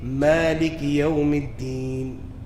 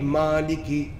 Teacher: And the sifa of reading the mim with tarqiq, empty mouth, that is a sifa lazima, permanent sifa. Mim can never be read or recited to the full mouth.